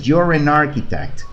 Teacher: Y aquí estoy pegando la N con la A de arquitecto. En lugar de decir architect, ahora digo narchitect.